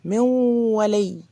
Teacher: بصوا من ولي اديت غنة. الواو طبعا ملهاش غنة ولا الياء ليها غنة، فأنا الغنة دي بتاعت النون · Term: ادغام ناقص